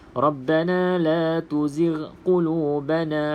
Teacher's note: Kadang-kadang orang nak baca cepat doa kan, dia jadi tersasul, tak bunyi ghain tu. · Pastikan huruf ghin. Sebab ramai yang baca dengan ain ni. Walaupun niat dia tak baca ain, tapi bunyi dia ain. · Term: huruf ghain